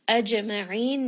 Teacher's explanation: Mim has tawassut. Ajma'in, jim is going to have qalaqala. It has a little bit of that bounce. Ayn from the middle of the throat and then end on a four count madd. · It has a little bit of that bounce. Ayn from the middle of the throat and then end on a four count madd. And then this is going to be with tawassut as well on that nun.